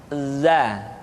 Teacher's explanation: Selanjutnya, huruf za. Diucapkan dengan cara ujung lidah kita berada di antara dua gigi seri bagian atas dan bagian bawah.